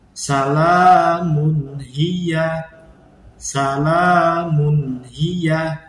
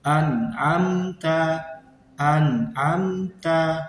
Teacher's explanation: Jadi cara membacanya jelas tanpa disertai dengan dengung. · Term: idhar